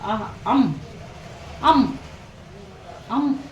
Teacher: ಅಹ ಅಂ ಅಂ ಅಂ ಅಂತ ಹೇಳಿ ನಾವು ಏನಾದರೂ ಕರೆದು ಅಂತಂದ್ರೆ ಗಂಟಲಿನಿಂದ ಉತ್ಪತ್ತಿಯಾಗಿ ನಂತರ ನಾಸಿಕದ ಮೂಲಕ ಬರ್ತದೆ ಹೊರಗೆ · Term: ಕಂಠನಾಸಿಕ